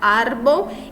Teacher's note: Árbol e é a sílaba mais forte, então, a penúltima. Ar. Grave ou llana.